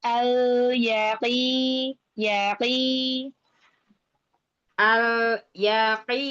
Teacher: lam sukunnya mengalir jangan sampai terputus